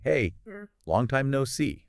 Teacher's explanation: Now, imagine hearing that said quickly, casually with a friendly tone, maybe a slight upward inflection at the end, like a greeting.